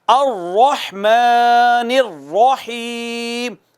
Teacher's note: یہاں دونوں جگہوں پہ رحمان میں بھی اور الرحیم میں بھی را مفخم ہے، پر کر کے پڑھنی ہے. اگر آپ اس کو باریک کر کے پڑھ دیں، باریک کر کے پڑھ دیں، الرحمن الرحیم باریک کر دیں، تو رحمان رحمان ہی رہے گا، رحیم رحیم ہی لفظ رہے گا.